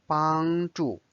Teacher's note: 帮 is the first tone, it's a flat tone. 助 is the fourth tone, is the falling tone.